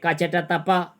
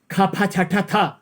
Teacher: थोरै हावा लाग्छ, अनि खफ छठ थ बढी हावाको झोक्का लाग्छ, महाप्राण भयो